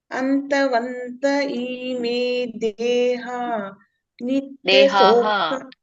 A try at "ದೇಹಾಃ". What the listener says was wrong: ವಿಸರ್ಗ ಇದೆಯಲ್ಲ ಅಲ್ಲಿ. ದೇಹಾಹ. ನೀವ್ ಹೇಳಿ, ನೀವು ಯಾಕಂದ್ರೆ ನೀವು ಬಿಡ್ಬೇಡಿ. ಯಾಕಂದ್ರೆ ಯಾರು ಶ್ಲೋಕ ಈಗ ಬರುತ್ತೋ ಅವರು ದೇಹ ಅಂತ ಹೇಳ್ತಾರೆ, ದೇಹ ಅಂತ. ಬಟ್ ನೀವು ಬಿಡ್ಬೇಡಿ, ಯಾಕಂದ್ರೆ ಯಾರು ಬಿಗಿನರ್ಸ್ ಇರ್ತಾರಲ್ಲ ಅವ್ರು ಪೂರ್ಣ ಹೇಳಲೇಬೇಕು ಉಚ್ಚಾರಣೆ. ದೇಹಾಹ.